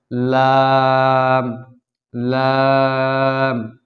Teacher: 8 নম্বর মাখরাজ জিহ্বার আগার কিনারা সামনের উপরের দাঁতের মাড়ির সঙ্গে লাগাইয়া